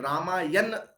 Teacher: र के समय हमारी जीभ पलट गई थी, न बोलने में दिक्कत आ रही थी, तो न को हमने क्या कर दिया, ण कर दिया, तो रामायण हो गया।